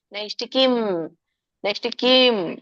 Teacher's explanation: ಮ ವ್ಯಂಜನ ಇದೆ ಸೋ ಹಾಗಾಗಿ ಅಲ್ಪವಾಗಿ ಮ ಉಚ್ಚಾರಣೆ ಮಾಡಬೇಕು